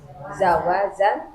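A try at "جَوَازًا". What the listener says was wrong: Jim dulu. Jim dulu. Baru zai.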